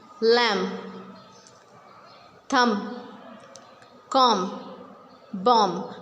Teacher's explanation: When B comes with M, like before B it is M, we will not pronounce B after M. We will just stop pronunciation till M. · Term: silent B